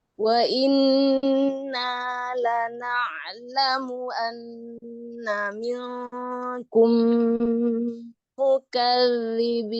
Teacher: Jadi alirkan zalnya ada rokhwah di situ ya.